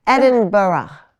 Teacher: there really is a half syllable at the end it's sort of like the G is a vowel